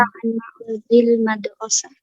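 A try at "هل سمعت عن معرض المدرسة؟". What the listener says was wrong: Nah, ini karena dia ada alamatul istifham, ini tanda tanya, maka kita juga nadanya bertanya, bukan justru menyatakan, ya. Beda antara pernyataan dengan pertanyaan.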